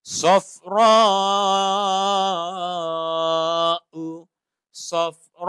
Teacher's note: Kita nak belajar wajib mutasil ni 5 harakat.